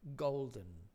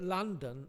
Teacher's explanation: is not possible if the preceding consonant is a nasal therefore golden may have a syllabic n golden but London may not and this is because in London there is a nasal here